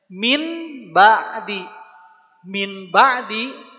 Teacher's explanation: menjadi mim merubah bunyi nun sukun atau mim menjadi mim ya bunyinya jadi m disertai dengan gunah juga jadi harus ada gunah